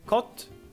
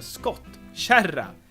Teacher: s gets dropped because of the double consonant so we've got just caught